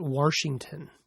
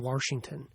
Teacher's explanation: there are a small number of people who put an R in the States just to the north. They call it Washington.